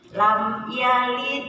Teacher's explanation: dibacanya jelas jelas tegas tidak dengung tapi tidak loncat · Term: izhar syafawi